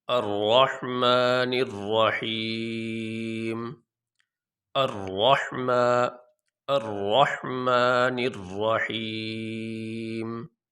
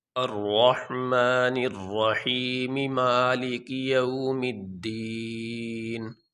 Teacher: وقف کرنے کی صورت میں میم کے نیچے جو زیر ہے یہ نہیں پڑھا جائے گا، اس زیر کو چھوڑ دیں گے، میم کو ساکن پڑھیں گے۔